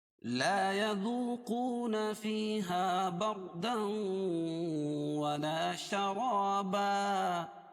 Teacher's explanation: 2 زبر کی تنوین پر وقف کریں گے تو ایک زبر باقی رہے گا اور دوسری زبر کے قائم مقام الف لائیں گے